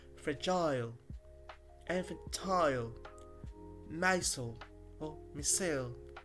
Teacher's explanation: Words ending in ile use I instead of the schwa, sounding more like isle.